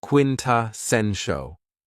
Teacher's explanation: this word has 4 syllables, and the stress is on the third syllable